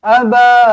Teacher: Ba ni empat ataupun lima harakat Mad Jaiz munfasil